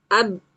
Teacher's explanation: tanpa qalqalah hanya dengan merapatkan atau mengatupkan dua dua bibir ya. Ab diidgamkan ini maknanya adalah pada saat kita mengucapkan ba yang sukun kita tidak melepasnya dengan qalqalah ya. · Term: ba sukun tanpa qalqalah